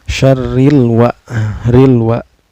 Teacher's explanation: Min syarril wa, ro-nya ini dihukumi tarkik ya, atau tipis karena ro berbaris kasroh